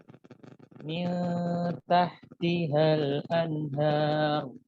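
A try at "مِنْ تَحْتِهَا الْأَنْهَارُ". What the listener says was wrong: Baik, cukup, jangan terlalu besar Ustaz. Tahtiha.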